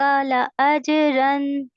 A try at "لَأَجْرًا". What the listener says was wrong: Good لَأَجْرًا را کو heavy کریے. لَأَجْرًا.